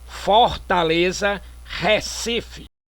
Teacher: emprego de pretônicas abertas